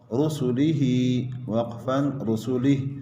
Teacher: البتہ رسلہ میں را کے اوپر پیش ہے، را کو موٹا پڑھیں گے